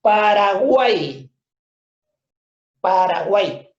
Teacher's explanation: Al final, para efectos de esta palabra, la Y tiene un sonido vocálico como la I latina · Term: triptongo